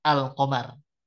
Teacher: karena suara lam sukunnya jelas ya tidak hilang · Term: izhar